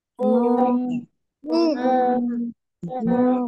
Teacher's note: এটা হবে মিম, মিম দুই ঠোঁটে একসাথে মিশে